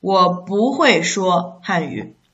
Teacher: Here this 不 should be rising tone Rising tone, read as rising tone 我不会说汉语 Okay, so this 会 is actually indicating you have ability through learning So 说汉语 is an ability you don't have naturally and it's something you learned later through effort.